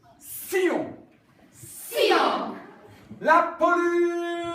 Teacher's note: In French, it's not a sh, it's a s, like a snake